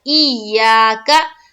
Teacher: اب دیکھیے یا کے ساتھ الف ہے نا، الف ہے تو الف مدہ بھی کرنا ہے، ایسا نہیں کہ وہ قاعدہ بھول جائے، صرف تشدید کا قاعدہ جلد پڑھ کے نکل جائے، الف ہے تو الف مدہ بھی کرنا ہے، ای یا کا۔